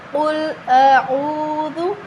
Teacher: ٹھیک ہے، تو اب غور سے سمجھیے گا۔ قل اعوذ، کاف کو موٹا پڑھیں۔ قل، کاف حروف مستعلیہ ہے